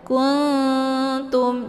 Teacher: Nun posisinya di ujung lidah, ta juga posisinya di ujung lidah, maka dinamakan dengan ikhfa aqrab.